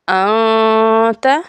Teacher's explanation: نون ساکن کے بعد تا آ گیا ہے تو ہم یہاں پہ اخفاء کے ساتھ غنہ کریں گے